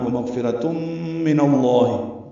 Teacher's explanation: ومغفرتم غین ساکن اس پہ اظہار را پر تنوین کے بعد میم آنے کی وجہ سے ادغام ناقص مع الغنہ